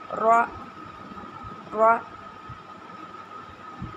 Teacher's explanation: په را کې چې دی نو د ژبې د منځ تالو طرف ته چتیږي